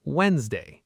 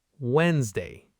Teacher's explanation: The D in the middle is silent. >> Silent means you don't pronounce it even though it's written there.